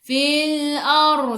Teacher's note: sebelum ra baris atas bacaannya tebal, ra naik lidah naik ke atas. Ar, tafkhim nama dia.